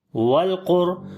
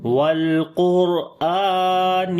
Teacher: لام کے اوپر صفت توسط کریں گے, آواز کو ہلکا سا کنٹینیو کریں گے. بہت جلدی میں نہیں پڑھنا.